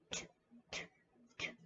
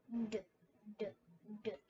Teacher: T sound has a little bit more air forced out and our D sound does not